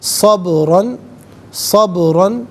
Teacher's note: را پر دو زبر کی تنوین ہے، اسے پر کر کے پڑھا جائے گا، اور یہاں وقف کریں گے تو دو زبر کی تنوین الف سے چینج ہوگی، تو اس وقت بھی اسے پر کر کے ہی پڑھا جائے گا۔